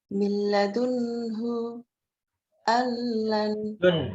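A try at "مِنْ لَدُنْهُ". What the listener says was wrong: Dunnya juga sama, tidak perlu ditahan. Miladunhu.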